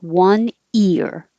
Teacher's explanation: you don't have to go as high for the y but you do have to raise your tongue for the e sound one ear you can take a little break and divide it